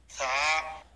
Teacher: জিহ্বার আগা উপরের দাঁতের আগায় লাগবে, জিহ্বা এবং দাঁতের ফাঁকে বাতাস বের হবে, এক আলিফ পরিমাণ লম্বা হবে, পাতলা আওয়াজ হবে।